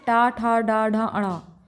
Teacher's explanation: ट वर्ग में ट, ठ, ड, ढ, ण इनका उच्चारण स्थान मूर्धा है।